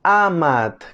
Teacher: en fonética conoce con el nombre técnico de vocal abierta anterior no redondeada todos la conocemos como la letra a la suena como en